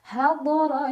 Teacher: Ro dibaca secara tafkhim karena ro ada barisnya dan barisnya di atas. Maka cara baca ro-nya dibunyikan dengan tebal dengan cara mengangkat pangkal lidah kita.